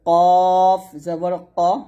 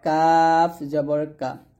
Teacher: তাহলে এটা বলতে হবে কফ জবর ক, এটা হবে কাফ জবর কা। এখানে কফটা মোটা হবে, কাফ পাতলা হবে,